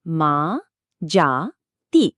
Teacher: প্রত্যেকটার শেষে আ বা ই এর মতো স্বরধ্বনি আছে, তাই উচ্চারণটা কোথাও আটকাচ্ছে না, বরং মুখ থেকে খোলা হাওয়ার মতো বেরিয়ে আসছে। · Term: মুক্ত দলের